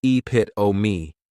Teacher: many times people may mispronounce it because the 3rd syllable has that schwa, and the last syllable is that long epit-o-me.